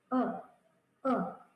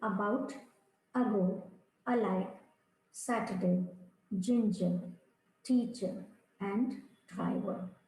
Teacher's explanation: This is the श्वा sound और it is अ neutral sound. इसमें आपका जो मुख है वो बहुत रिलैक्स और न्यूट्रल पोजीशन में होता है, जैसे आप कुछ नहीं बोल रहे.